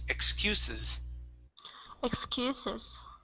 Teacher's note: the first s is unvoiced